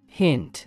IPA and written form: hɪnt (hint)